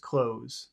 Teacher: you never pronounce the th it's just clothes there's no th sound